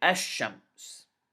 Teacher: we say the sheen with a shadda, and we ignore the lam